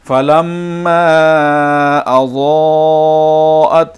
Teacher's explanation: فَلَمَّا أَضَاءَتْ، یہ دونوں مد جو ہے 5 سیکنڈ کے برابر کھینچ کر پڑھیں گے